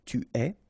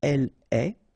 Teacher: you get this ES, but then phonetically it's est, alright, quite open